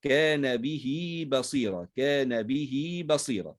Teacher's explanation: فتوصل بحرف مجانس للكسرة وهو الياء، فنصلها بياء